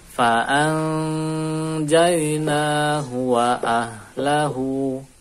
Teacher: Itu nun sukun temu jim atau tanwin temu jim. Ini dibaca ikhfa, didengungkan, nunnya disamarkan. Jadi kita, contoh baca kita fa'an dan nun disamarkan nunnya fa'an an, selain dia samar kemudian masuk ke dengung an.